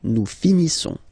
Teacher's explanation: Nous finissons. Finissons. Okay, final s not pronounced.